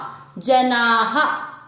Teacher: दूसरा चरण जनाः, ज में अमिक्स किया, जना, आ की मात्रा है तो विसर्ग को पढ़ेंगे हा